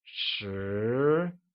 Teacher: 10 becomes shi and is pronounced with a mid-rising tone, like shi. Let's take another look at numbers 6 through 10.